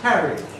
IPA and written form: ˈkærid (carried)